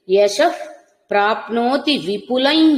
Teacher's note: విసర్గ పకారం లాగా వినబడుతుంది